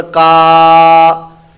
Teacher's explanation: کاف الف زبر کا، الف پڑھا تو یہ الف مدہ بن گیا، تو اس کو لمبا کریں گے، ایک الف دو حرکات کے برابر